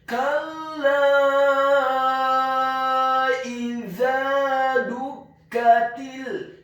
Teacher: Karena huruf lam alif saja ketika fathah dibaca 2 harokat, dan di atas harokat fathah huruf lam alif ada harokat bendera, maka huruf lam alifnya dibaca tipis, tarqiq, ditasydidkan, ditekankan, fathah 4 sampai 6 harokat